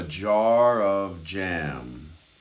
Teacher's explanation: the f and the j elide into sort of one nuanced sound